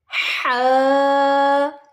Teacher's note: ये बिल्कुल हलक से यानी गले से। हा, गैन, खौ, ये तीनों हरूफ बिल्कुल हलक से अदा होते हैं चारों, और ये हलक के निचले हिस्से से।